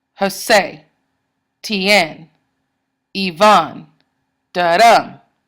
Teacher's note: The stress is on the second syllable. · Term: iambs